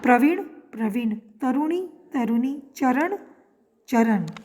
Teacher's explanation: आधुनिक ब्रज भाषा में ण के स्थान पर न का प्रयोग मिलता है। यदि ण लिखा भी जाता है तो उसका उच्चारण न ही किया जाता है।